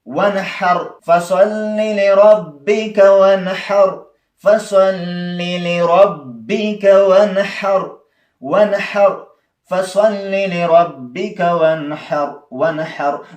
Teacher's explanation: که حا ته وګورئ ها حرف د اظهار دی نو دا معنی چې اظهار به کوئ دلته یعنې نون ساکن به ظاهروئ